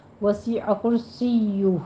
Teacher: سیو میں یا کی تشدید ادا کیجیے اور اوپر ضمہ ہے ہونٹ گول کر لیجیے